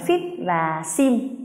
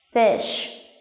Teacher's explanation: nó có cả âm ê mỏng miệng và đồng thời cũng chứa đựng âm gió